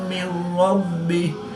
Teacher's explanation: نون ساکن کے بعد را حروف یرملون میں سے ہے تو یہاں پر ادغام بلا غنہ ہوگا، یعنی کہ یہاں پر غنہ کریں گے اور یہاں پر غنہ نہیں کریں گے۔